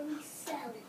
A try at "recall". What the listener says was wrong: Does an A ever say eh? No. What does an A before L say? Two dots, because A before L says ah. Recall.